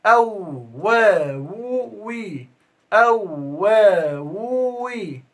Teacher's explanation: والواو تخرج باستدارة الشفتين